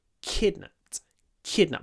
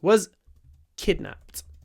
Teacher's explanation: my mouth goes into the position, but I don't release the sound immediately, and that marks the stress.